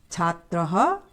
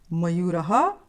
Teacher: इन सभी शब्दों के अंत में ये जो दो बिंदियां हैं इन्हें विसर्ग कहते हैं, और संस्कृत में इसका उच्चारण करते हैं अह से